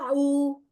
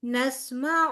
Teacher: عین کے اوپر صرف پیش ہے، او نہیں کہیں گے